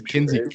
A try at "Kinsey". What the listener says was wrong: Kinsey, without the L. Kinsey.